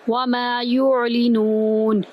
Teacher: وما کا میم ایک الف کے برابر لمبا کریں گے، یا کو آئین کے اندر داخل کریں گے، آئین وسط حلق سے ادا کریں گے